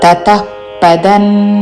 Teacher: విసర్గ తర్వాత పతో పదము మొదలవుతున్నది కాబట్టి శ్వాస వదులుతూ చివరన ప లాగా ఉచ్చారణ · శ్వాస వదులుతూ చివరిన ఫా లాగా ఉచ్చారణ